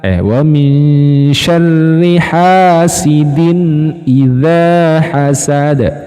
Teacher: yang terakhir hasad menggunakan Dal dipantulkan